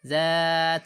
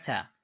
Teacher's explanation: we'll stretch for the zal and we'll not stretch for the ta. So zal has an empty alif or alif maddiya and fatha before it. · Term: stretching